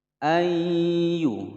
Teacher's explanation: nun sukun bertemu dengan ya, hukum bacaan idgham bi gunnah, dimasukkan dan didengungkan selama dua ketukan